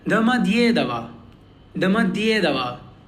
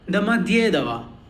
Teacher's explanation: In this, as you can see, we have 4 O's and 1 Ye. Ye is the stressed one. So all the O's are pronounced like A, and the entire word is pronounced like Damadyedava.